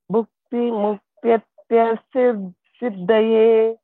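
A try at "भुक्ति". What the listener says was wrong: Bhukti Bha is Mahaprana. You have to stress. Bhukti. Bhukti. Bha. Bhu. BHU. Bhu. Bhukti. Bhukti.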